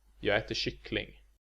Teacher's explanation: On their own, these words would have accent 1, 1, and 2. But, together in a sentence, prosody takes over, and we only stress the final word, kyckling, with accent 2.